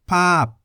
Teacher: The word pap, meaning picture for example, has the localist consonant paw-pan, which sounds like the letter P, as the final consonant. Paw-pan is a stop final consonant, so the sound is stopped before air is expelled from the mouth.